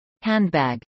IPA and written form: ˈhændˌbæɡ (handbag)